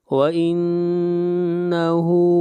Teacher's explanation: نون کے اوپر شد ہے، غنہ کریں گے، ہا کو کھینچ کر پڑھیں گے۔